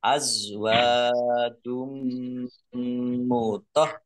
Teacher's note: Mendengung mim, ditandai mimnya ada tasdidnya. Mim tasdid, dibaca hunah atau mendengung, ditahan dua harokat biar tampak dengungannya. Mutoh harokatnya dibaca dobel, ada tasdidnya.